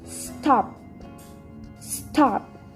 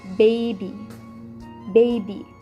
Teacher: the lower and the upper lips approach or touch each other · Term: bilabial